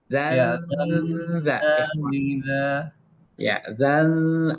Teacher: Tanwin ketemu dengan za, suaranya agak ditahan dikit, agak dilamakan ya.